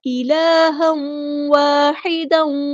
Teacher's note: تنوین کی آواز کو ہم واو کی آواز میں دوبارہ یہاں پہ مکس اپ کر دیں گے، یہاں پہ ادغام مع الغنہ ہو رہا ہے۔